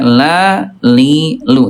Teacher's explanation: huruf lam dia punya sifat huruf dari segi udara namanya jahr, yaitu tidak keluar udara, ya. La, li, lu tidak ada udara.